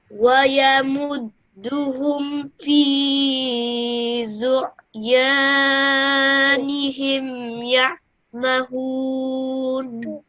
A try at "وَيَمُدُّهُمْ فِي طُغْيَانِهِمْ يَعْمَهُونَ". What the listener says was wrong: That was nearly perfect. Just over here, you missed this out. It's طغيا. So, في طغيانهم.